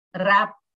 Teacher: When we say rap, the P is also closing our lips.